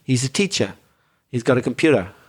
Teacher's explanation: when english people from england say words like teacher they could do with a bit more r there